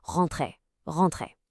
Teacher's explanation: That en sound is one of those classic French nasal sounds. Imagine you're about to say the English word on, but you stop the air in your nose, kind of like a hum.